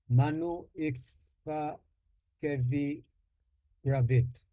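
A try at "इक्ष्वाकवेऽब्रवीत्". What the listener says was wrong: Not kevi, kave. Ikshvakave pravit. You're struggling a bit with the A. You pronounce it as A. It's A. Ikshvakave pravit.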